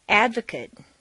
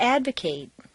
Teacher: The stress stays in the same place, but the MAT in an adjective is completely reduced to mt, whereas in a verb it's a full A sound, mate